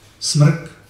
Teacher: A říkal jsem si, no tak je to R, ten člověk, protože to R je ještě navíc speciální, že je slabikotvorné. Je to slabikotvorná souhláska. Je to jako souhláska, ale má proud vzduchu R a může tvořit slabiky.